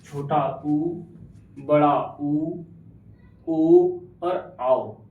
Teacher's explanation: जिन स्वरों के उच्चारण करते समय, उच्चारण करते समय ओष्ठ गोलाकार गोलाकार हो जाते हैं, उन्हें वृत्तमुखी स्वर कहते हैं।